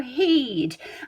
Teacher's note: instead of saying the whole would word, we're going to go heed